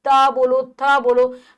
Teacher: हमारी जो जिह्वा है दांतों को छू रही है, तो ये दंते हैं